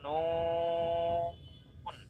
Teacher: তো এই নুন হরফটাকে আপনি 4 আলিফ টেনে পড়বেন, বা 4 আলিফ লম্বা করে পড়বেন।